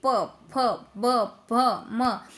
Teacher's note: फिर है प वर्ग, तो ये ओठों में से उच्चारण होते हैं।